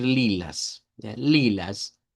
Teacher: con una a centralizada